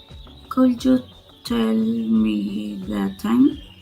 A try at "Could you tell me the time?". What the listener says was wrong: But it's could. Remember that L is silent. Could, could.